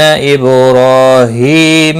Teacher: نون مشدد پر غنہ ہوگا، با ساکن پر قلقلہ ہوگا، را کے اوپر کھڑی زبر ہے، ایک الف کے برابر کھینچ کر پڑھیں گے۔